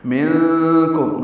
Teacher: منکم نون ساکن کے بعد کاف آنے کی وجہ سے اخفا ہے، میم ساکن پہ اظہار شفوی ہے